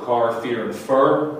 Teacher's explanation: car, fear, and fur, where the R is sounded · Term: rhotic